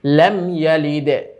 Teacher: মিম সাকিনের ইজহার হয়, এখানে কোনো ধরনের গুন্না হবে না।